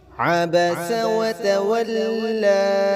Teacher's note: سین سیٹی والا حرف ہے، چھوٹی سین ہے یہ